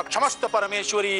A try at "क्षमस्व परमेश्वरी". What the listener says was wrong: पंडित जी, क्षमस्ता परमेश्वरी नहीं, क्षमस्व, क्षमस्व परमेश्वरी। पंडित जी, आपने क्षमस्ता कहा।